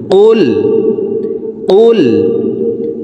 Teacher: কফ হরফের উচ্চারণ জিব্বার গোড়া তার বরাবর উপরের তালুর সঙ্গে লাগাইয়া উচ্চারণ করতে হবে।